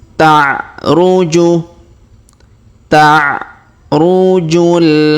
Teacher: Huruf ju langsung sambung ke alif lam qamariyah yang sukun